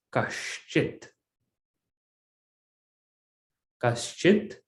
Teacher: So when I have kaha plus chit, I get this visarga sandhi takes place, and visarga becomes shakara. So it becomes kaschit.